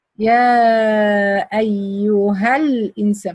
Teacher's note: from the ها to the لام I drop the ألف because it's following by ساكن